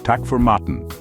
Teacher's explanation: Notice the cheerful, downward inflection